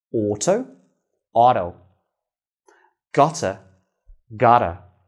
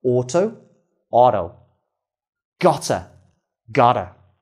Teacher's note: when t comes before a schwa sound and this sound is unstressed in the word this also turns into the d sound